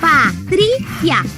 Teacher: A mais forte é a penúltima.